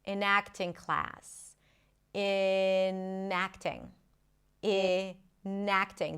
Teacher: The N becomes the beginning of the next word.